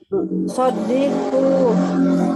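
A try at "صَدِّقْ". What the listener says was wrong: Sodik sukun. Sodik. Nggak ada kunya. Sodik.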